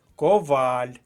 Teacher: наголос на другому складі